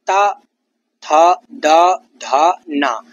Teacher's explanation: ये दंत वर्ण है। जीभ दांतों से टकराती हुई इन वर्णों का उच्चारण करती है।